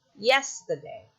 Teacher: So you have stress, unstressed, unstressed. You have dactyl.